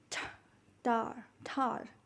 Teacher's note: with an extra puff of air that is known as aspiration